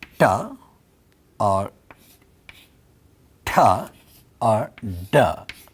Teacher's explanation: retroflex sounds, where the tip of the tongue curls back and hits the upper part of the hard palate